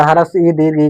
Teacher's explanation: ह्रस्व ई दीर्घ ई का जो उच्चारण स्थान है वो तालु है, इसलिए इसे तालव्य कहा गया